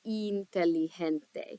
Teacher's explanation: I in Spanish is going to make that nice E noise that we want to hear. So I is always going to sound like E.